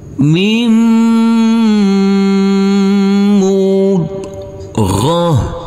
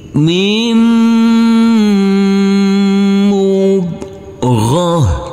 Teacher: Huruf mim ini langsung masuk ke huruf mim yang bertasdid ini, karena di sini ada huruf nun yang bertemu dengan huruf mim, huruf nun sukun, maka ini adalah bacaan idgham bihunna. Huruf mim yang bertasdid ini kita dengungkan, kita tahan, serta kita tekan.